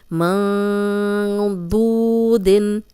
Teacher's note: دود پیش واو دو، یہ 2 حرکات لمبا کریں گے کیونکہ واو مدہ ہے، جزم والی واو پیچھے پیش ہے.